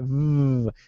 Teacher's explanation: the buzzing sound that's right V it vibrates it buzzes